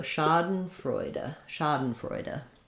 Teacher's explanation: first syllable stress so it sounds like Shah · So we have the ah vowel, first syllable stress, so it sounds like Schaden, a little I or no vowel for that Schaden, for that second syllable Schaden, and then Freu is the noisy boy vowel.